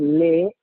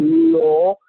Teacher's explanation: va a dejar salir el aire por las laterales. Por eso que la L es lateral, el modo.